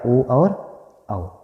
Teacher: इनका जो उच्चारण स्थान है वो कंठोष्ठ है, कंठोष्ठ, ठीक है, कंठोष्ठ है, कंठोष्ठ, कंठ और ओष्ठ दोनों से होकर होता है, ठीक है, ओ औ का